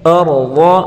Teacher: را اور ضا دونوں کو پر پڑھیں گے